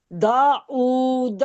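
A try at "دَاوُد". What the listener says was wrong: फिर ऊ बोल रही हैं आप, दा वू। अरे ऊ नहीं, वू बोले, वू।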